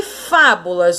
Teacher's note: Última, penúltima, antepenúltima sílaba. Então, a mais forte de fábulas é a antepenúltima sílaba.